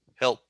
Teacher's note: It begins with a breath of air, and then the vowel sound eh, and then the consonant sound l, and then the consonant stop